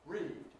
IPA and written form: riːd (read)